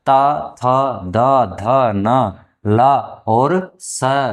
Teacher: सभी वर्णों को उच्चारण करने के लिए हमारी जिव्या का भाग जिव्या के भाग को दांत का स्पर्श करना आवश्यक है · अगला हमारा उच्चारण स्थान है ऋतुलसानाम दंता, अर्थात ली और तय वर्ग ता थ द ध न ला और स, अर्थात इन सभी वर्णों को उच्चारण करने के लिए हमारे जिह्वा के भाग को दांत का स्पर्श करना आवश्यक है, इसलिए इन्हें दंत्य वर्ण कहा गया है। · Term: दंत वर्ण